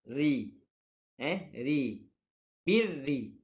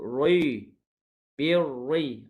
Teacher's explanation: huruf ra yang berbaris kasrah, maka perlu dibaca dengan nipis